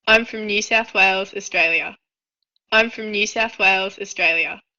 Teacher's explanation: tenemos la palabra new, que le está pronunciando con la semiconsonante